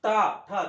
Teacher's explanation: ट ची सगळी ओळ बघा म्हणजे इथे जीभ घासते बरोबर वरती मुरडते जीभ मुरडूनच यांचा उच्चारण होते म्हणून यांना आपण काय म्हणतो मूर्धन्य वर्ण म्हणतो बघा.